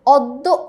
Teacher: অদ্য উচ্চারণ করতে আমরা বুঝতে পারছি এখানে যে জফলা আছে তার প্রভাবে এটা ও এর মতো উচ্চারিত হচ্ছে